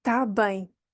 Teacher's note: So, tá bem is because we do not pronounce, not always, but sometimes we don't pronounce the beginning of the verb estar, to be. Tá bem. So you could, if you hear está bem, it's much easier, but maybe we're not going to pronounce it.